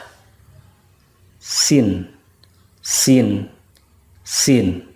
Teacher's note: Sedangkan kalau Sin itu ujung lidah dengan gigi seri yang bawah